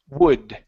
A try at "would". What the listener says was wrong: So right now, what you're saying is ood. You're saying ood. Instead of ood, open up the mouth.